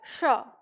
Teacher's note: जिस तरह से हम ट ठ बोलते हैं उसी तरह से हम बोलेंगे श, मतलब अपनी जीभ को वहां मोड़ कर ले जाएंगे, तो फिर ये क्या हो जाएगा, श। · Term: मूर्धा श